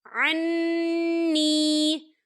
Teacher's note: یہاں نون مشدد ہے، تو یہاں پر غنہ ہوگا